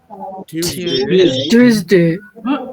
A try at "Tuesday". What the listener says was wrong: টুইজ হবে না, টিউসডে, না টুইজ হবে না, টিউজ উইথ দ্য লাইট ফিউজ হয়ে যায় না?